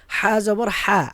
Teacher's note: হা জবর হা আরবিতে গলার হলকের মধ্যখান থেকে উচ্চারিত হয়